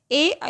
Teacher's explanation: ए और आई, इनका उच्चारण स्थान होगा कंठ तालु